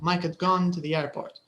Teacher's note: the h is is not there